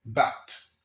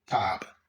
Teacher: This is a voiced sound, and you can hear it at the beginning of the word bat and at the end of the word tab.